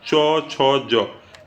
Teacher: च छ ज ये तालु से आते हैं